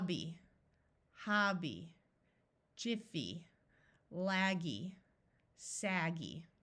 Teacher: these syllables end in a y but it's not an accented syllable so it will have the long e sound